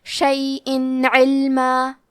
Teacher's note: ہم یہاں تنوین ظاہر کریں گے اور اسے نون ساکن پڑھیں گے اور بغیر غنہ سے یہ حکم کو ادا کریں گے۔ شیئن علما، کلمت علما میں لام ساکن ہے تو ہمیں حرف اللام کو ظاہر کرنا ہے۔ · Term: اظہار